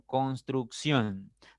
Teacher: derecha izquierda pasa lo mismo con construcción tiene tres sílabas pero la mayor fuerza la mayor intensidad está en siion en la primera sílaba contando de derecha izquierda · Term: palabra aguda